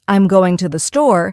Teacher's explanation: in the phrase I'm going to the store, the stress naturally falls on going and store. The smaller words like I'm and to the R less emphasized and spoken quickly. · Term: stress pattern